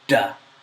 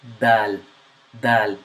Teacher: your mouth so you say duh but with the letter L the tip of the tongue does not meet the roof of your mouth but the top of your front teeth